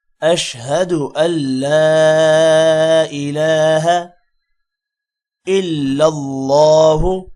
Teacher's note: اللہ کے نام کو موٹا کریں گے اور ہا کو لمبا نہیں کرنا